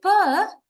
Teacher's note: we block the Air Stream at the lips